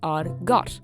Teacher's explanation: Eclipsis, the other mutation, called the uru in Irish, always happens after the word in, after some numbers, plural possessive pronouns, and the definite article provided the word has a specific case and number. Eclipsis turns a voiceless stop into a voiced one.